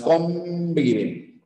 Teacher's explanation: esta n ya no es una n se ha convertido en un n bilabial básicamente en una m